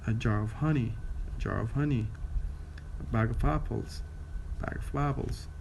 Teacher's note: the stress pattern of weak, strong, weak, strong, weak